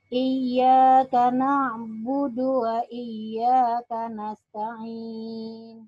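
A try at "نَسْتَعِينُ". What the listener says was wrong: Masih, Bu ya. Nas ya, ditekan, Bu. Dan kalau sa, kalau kita lihat ya, kalau huruf sa, ini buat yang lain juga ya, ibu-ibu yang lain, huruf sin memiliki sifat sofir ya. Sofir itu dia berdesis ya. Jadi percuma ibu ngomong sa kalau sa-nya ini desisnya kurang.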